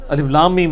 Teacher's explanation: میم کے اوپر تشدید بھی ہے، غنہ بھی ہو رہا ہوگا